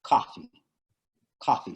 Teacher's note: It's more like, I guess the vowel is more open.